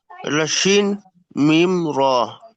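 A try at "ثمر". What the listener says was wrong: শিন নয়, সা মিম র, জি।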